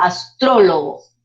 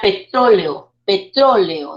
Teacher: lleva la mayor fuerza de voz en la antepenúltima sílaba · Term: palabra esdrújula